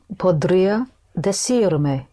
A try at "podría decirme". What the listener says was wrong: right, podría decirme, yes.